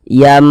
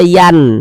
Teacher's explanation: cara membacanya dengan merubah menjadi huruf mim maka di sini kan dikasih mim kecil nih maka kita baca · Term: iqlab